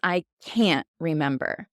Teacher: in typical English fashion we actually drop that t sound